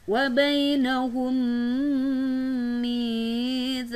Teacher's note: mim mati bertemu dengan mim, berhukumkan idgham mutamatsilain atau idgham mimi, maka mim mati dipadukan dengan mim yang berada di depannya